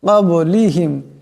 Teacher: এখানে বা সাকিন বা কলকলার হরফ, গতিকে আওয়াজটিতে একটি টক্কর খাবে